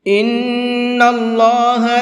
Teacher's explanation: نون کے اوپر تشدید ہے تو نون میں غنہ کر کے پڑھیں گے، اور اللہ کے لام کو پر کر کے پڑھیں گے۔